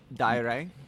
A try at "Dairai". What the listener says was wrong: Yes, sort of. You're close, actually. That's not too bad. The biggest, I think the challenge with it is the D. Because in English, D is da. Like when you see D, you have to pronounce a hard D. Whereas this one is Dairai.